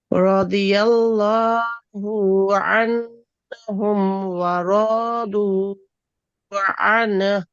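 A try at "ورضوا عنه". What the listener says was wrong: আচ্ছা, রদু যে বললা, এখানে কি আলিফ আছে রয়ের সামনে? শুধু রদু, রদুতে টান দিবা। দেখো আমারটা শোনো, রদিয়াল্লাহু আনহুম ওয়া রদু আন, রদু আন। তুমি করছো কি রদু, কিন্তু আলিফ নাই। আলিফ না থাকলে আলিফ টানা যাবে না, তাহলে এটা হচ্ছে মেজর ভুল।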